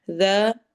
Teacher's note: ذال کو نرمی سے پڑھیں گے اور الف مدہ کریں گے۔